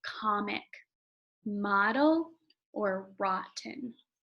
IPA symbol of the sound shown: o